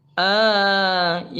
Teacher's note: Mat badal ini satu alif yaitu dua ketukan.